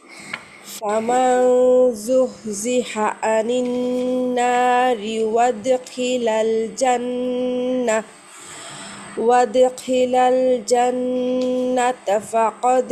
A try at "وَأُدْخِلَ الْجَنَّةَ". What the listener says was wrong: ওয়াদি খিলাল কেন বলতেছেন, কারণটা কি? মাঝখানে হামজা দম্মারে বাদ দিচ্ছেন কেন?